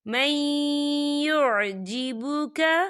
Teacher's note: یہاں پر ادغام ہوگا، تھوڑا سا غننے کے ساتھ پڑھیں گے۔